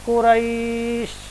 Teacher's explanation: യാടെ മഖ്റജ് നാവുടെ മധ്യത്തിൽ നിന്നെടുത്ത് അണ്ണാക്കടെ മധ്യത്തിൽ ടച്ച് ആയിട്ട് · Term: ലീൻ